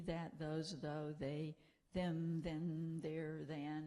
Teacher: the exceptional voicing of initial interdental fricatives in function words in english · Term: voiced fricative